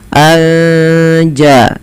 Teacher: Kemudian melafal anja'ahum, ada nun sukun bertemu jim, maka kita hukumi dengan bacaan ikhfa hakiki. Cara membacanya menyamarkan suara nunnya kepada huruf ja